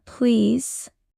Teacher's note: stretching the vowel makes it sound kinder.